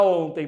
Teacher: não tem acento gráfico, mas tem acento tônico, que é o on. O on, portanto, ela é uma paroxítona.